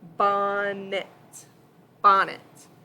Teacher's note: We code it with a breve. You can put the accent in the front in the first syllable.